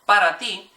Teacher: your hand stick it in front of your mouth and go when you say that initial P there should be very minimal uh air hitting your hand